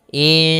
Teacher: nunnya kita samarkan kepada huruf sin, kemudian terdengar suara samar-samarnya. Insan. Panjangkan dulu dengungannya atau panjangkan dulu ikhfa-nya.